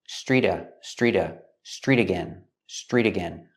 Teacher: The T in street is between vowels, so it changes to a fast D.